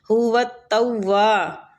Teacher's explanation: تا کو واو کے ساتھ ملائیں گے اور واو کو کھینچیں گے، الف مد بھی ہو رہی ہے۔